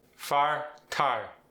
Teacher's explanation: The long I goes to ah.